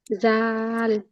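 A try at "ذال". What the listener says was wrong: জাল। এটা বর্গের জয়ের মতো বলা যাবে না। জাল হরফটা জিহ্বার আগা থেকে সামনে দুই দাঁতের আগার সাথে লাগবে।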